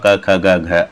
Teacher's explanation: अ का और क वर्ग कम मतलब क वर्ग है यह पूरा क ख ग घ आदि क वर्ग इस क वर्ग का जो उच्चारण स्थान है ना वो है कंठ